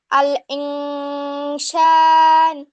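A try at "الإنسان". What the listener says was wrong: শান না বা সান, হ্যাঁ।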